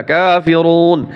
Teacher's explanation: এখানে আবার থামলে তিন আলিফ টান হবে এখানে কুল ইয়া কাফিরুন লাম আলিফ জবর লা তিন আলিফ টান